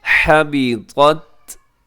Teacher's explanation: طا اور تا اکٹھے آ گئے، تو آپ نے اس میں طا موٹا رکھنا ہے، تا کو باریک رکھنا ہے